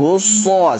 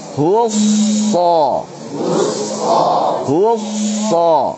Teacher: Hu ketika monyong ketemu dengan shad jangan terus monyong. Husso salah.